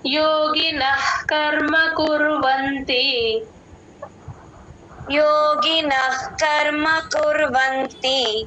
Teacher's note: యోగినః నా పక్కన విసర్గ యోగి యోగిన పక్కన విసర్గ హెచ్ సౌండ్ అండి క ముందు ఎప్పుడు విసర్గ వచ్చినా హెచ్ సౌండే చెప్తాం